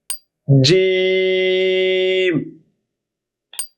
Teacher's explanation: জিহ্বার মধ্যখান উপরে তালুর সঙ্গে লাগিয়ে